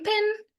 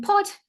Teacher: in pen it is a nasalized uh e and in pot it is not nasalized